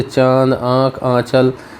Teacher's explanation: वे ध्वनि जो नाक और मुंह दोनों से बोली जाती हैं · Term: अनुनासिक